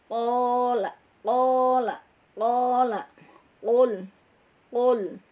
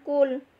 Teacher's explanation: qaf adalah tebal dan makhrajnya di pangkal lidah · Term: huruf qaf